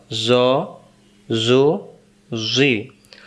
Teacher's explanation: জ অক্ষর জিহ্বার আগা থেকে মোটা করে পড়তে হয়